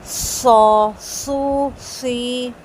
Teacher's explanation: پہلے سیٹی باہر آئے گی پھر آواز نکلے گی، سو سو سی۔ اور پورا منہ بھر کے پڑھا جائے گا.